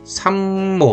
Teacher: 이게 상모가 아니라 삼모 이렇게 미음으로 저절로 어 나는 거예요